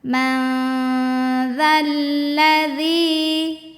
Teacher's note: setelah kasrahnya ada ya mati maka ini kita Ayun panjangin dua harakat